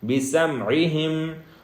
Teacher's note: بِسَمْعِهِمْ یہاں پہ سین ہے، سیٹی کی آواز دیں گے